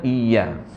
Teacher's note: Iya itu harful lin. Lemah lembut karakter ya. Jangan ditekan lebih.